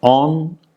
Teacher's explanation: o is nasalized because of a nasal following it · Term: nasalization